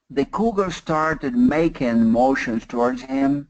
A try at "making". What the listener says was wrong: You're doing making. I want making. I still want more ing. ING. In Portuguese, what ING sounds do you have?